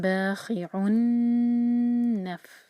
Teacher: خی حلق سے خا کی آواز آنی چاہیے ، اور تنوین کے بعد نون آ رہا ہے، باخعن نف،